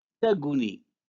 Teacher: The labialization of g, for example, in the verb gun, sleep, in Tashlhit, is a result of the presence of a rounded vowel after the velar stop g in the nominal form, taguni.